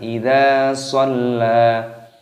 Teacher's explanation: lamnya berharokat tasydid maka ditekan, dimasukkan, diidghamkan